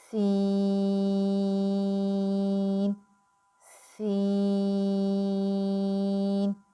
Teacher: سین کی ادائیگی کرتے وقت آپ نے خاص خیال رکھنا ہے کہ اس میں بھی آپ کی ناک میں آواز نہ جائے اور اس میں سیٹی کی آواز آئے · سین جو ہے یہ 3 حرفی لیٹر ہے، اور اس کو ہم دگنا لمبا یعنی کہ 6 حرکات لمبا کر کے پڑھیں گے